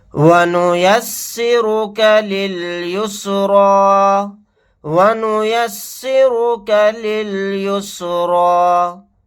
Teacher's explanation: را کو یہاں پر موٹا یعنی پر پڑھیں گے